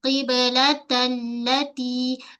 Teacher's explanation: pada lam sabdu kita menekan sedikit ada sabdu pada lam.